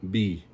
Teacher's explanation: in the Fa Sāmoa it's a softer, not as harsh, right? On the P, it's B, like a soft B